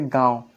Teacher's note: इनका संकेत ऐसे होता है, चंद्रबिंदु का अनुनासिक कहते हैं। जैसे गांव, जब आप गांव बोलेंगे तो गांव में आपका मुंह से भी आवाज़ आएगा और नाक से भी आएगा। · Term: अनुनासिक स्वर